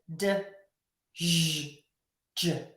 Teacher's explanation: The J sound starts with the D sound, D. So, it's actually two sounds put together, but these sounds are so quickly pronounced together that it becomes a new sound. So, don't think of it as two different sounds.